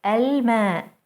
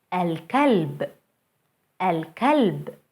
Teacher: moon letters allow the l before them to be pronounced fully · notice how moon letters allow the l to be pronounced fully